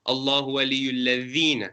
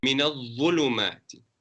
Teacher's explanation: So both of them you have your tongue between your teeth, but the first one, al-ladhina, is a nice empty with an empty mouth.